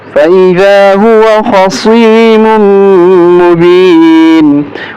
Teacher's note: खा को मोटा करेंगे, सौद को मोटा करेंगे और मीम को मीम के साथ मिलाते हुए गुन्ना करेंगे।